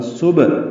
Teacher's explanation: تسبیح، سبحان اللہ، سین صفیر کی آواز سے ادا کرنا ہے، یعنی سیٹی کی آواز سے، باریک آواز ہوگی، با سے ملائیں گے، با ساکن ہے، اس پہ قلقلہ ہوگا۔ صبح، ہا وسط حلق سے ہا ادا ہوگا، دو حرکات لمبا کریں گے، الف مدہ ہے، مد اصلی۔